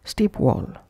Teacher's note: Pushing P into W of wall.